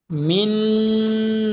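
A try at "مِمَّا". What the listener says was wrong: এই মা টান হচ্ছে কেন? মা টান হবে না। মিম, মা টান হবে না। মিম মানি।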